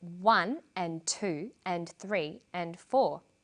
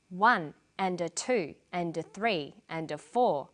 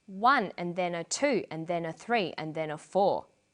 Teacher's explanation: Here, the words I'm stressing are the numbers 1, 2, 3, 4. The less important words are squeezed in between the beats. The more squeezed in, the shorter they become.